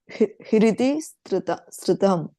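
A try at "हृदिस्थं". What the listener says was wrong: No, Hridistham. Hridistham. Sthang. not ma, sthang. Hridisthang. Hridisthang.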